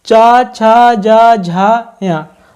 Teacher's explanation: चा, छा, जा, झा, या, तो इनको बोलते समय अपनी जीभ कहाँ स्पर्श कर रही है? तालु को